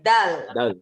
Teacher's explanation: Ingat D-nya itu digigit juga, ujung lidahnya digigit.